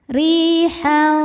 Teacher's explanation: Cara bacanya ditipiskan. Ri madnya adalah mad thobi'i zohiri. Sebab ada ya sukun sebelumnya kasrah. Cara bacanya panjang dua harakat.